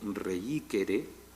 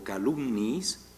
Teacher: coinciden dos sonidos vocálicos, y uno de ellos es cuasi consonántico